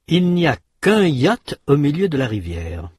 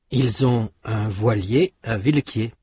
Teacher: Faites attention de passer directement de la semi-voyelle à la voyelle suivante. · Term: la semi-voyelle y